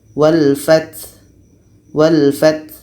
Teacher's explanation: Ta ini sifatnya hamas atau berangin. Jadi anginnya mesti terjelas.